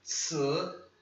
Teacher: Lembra a mesma coisa, esse I não é um I fechado, isso aqui não é tsi, isso aqui é tss, tá? O som do tss é mais forte, o som do I é meio mudo.